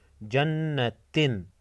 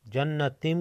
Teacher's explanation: علامت کے طور پر چھوٹا سا میم لگا ہوا ہوتا ہے، تنوین کے نون کو میم میں بدل کر غنہ کے ساتھ پڑھتے ہیں